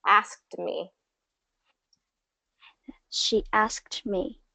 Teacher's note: the position has to get there for the D sound but you don't always fully release it